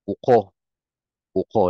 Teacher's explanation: Nandun naman sa ko yung stress niya.